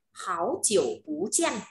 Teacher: Bú với jiàn thì jiàn là thanh bốn nên là bú lại phải đổi đọc thành bú lên